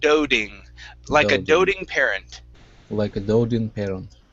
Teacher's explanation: with doting i would actually use a a flap t there